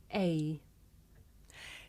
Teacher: towards the u our first diphthong is the closing diphthong a this is a diphthong a double vowel sound the shape the mouth makes changes from the beginning of the sound to the end